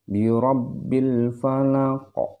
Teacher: Jadi qalqalahnya harus ada qa di ujungnya, itu seperti pantulan huruf qa-nya di sini, ya. Itu yang dinamakan dengan qalqalah kubra.